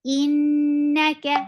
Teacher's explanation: Whenever these are with tashdid, we'll get sifa of gunna, and this gunna is akmal gunna. The sound should be in your nose for a longer period of time.